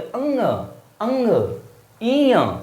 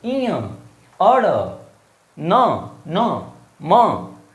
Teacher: इनके उच्चारण में नाक से हवा निकलती है, मुख से कम, नाक से ज्यादा। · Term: नासिक्य व्यंजन